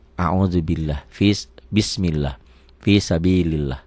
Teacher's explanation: Lafaz Allah dibaca tipis hanya satu. Kalau sebelum lafaz Allah barisnya di bawah.